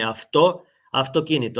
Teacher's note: ако после овие дифтонзи следува согласка која што е безгласна, како во случајов со т, авто, автокинито, тогаш природно тоа в се изговара како ф.